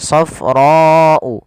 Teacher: Panjangkan huruf ra sepanjang 4 harokat karena di sini ada bacaan yang kita namakan dengan mad wajib muttasil. Mad wajib muttasil yaitu mad yang terjadi akibat adanya huruf hamzah yang datang setelah huruf mad.